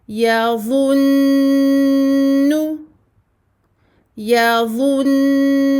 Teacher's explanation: Alors, la particularité du noun mushaddada, donc rouge ici, la couleur rouge est là pour vous indiquer que lorsque le noun porte une shadda, la runna sera très longue. Donc, la durée que nous allons donner à ce noun sera très longue.